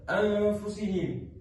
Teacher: didengungkan dengan kadar panjangnya selama dua harakat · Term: ikfa hakiki